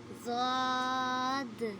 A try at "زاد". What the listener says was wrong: بیٹا زواد نہیں پڑھنا آپ نے, یہاں لکھا ہوا ہے زاد.